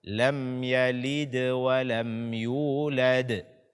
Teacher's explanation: berikanlah hak qalqalah pada huruf dal sukun tersebut